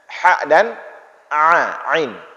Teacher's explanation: Tengah tenggorokan, di atasnya sedikit keluar huruf ha dan ain